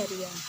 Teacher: Pemunculan fonem Y dapat terjadi apabila sufiks an itu diimbuhkan pada bentuk dasar yang berakhir dengan vokal I.